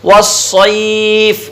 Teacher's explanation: صاد موٹا ہوتا ہے اور سین باریک پڑ جاتی ہے.